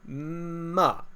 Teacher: starts high and then goes low